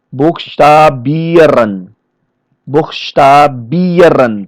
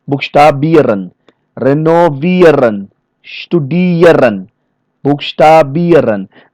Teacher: All the verbs which ending in ieren, this ieren is always going to be stressed. For example, here buchstabieren, buchstabieren.